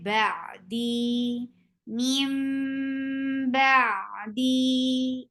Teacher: make sure you keep your sound in your nose for iqlab